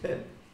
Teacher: in New Zealand what people do is everything becomes a schwa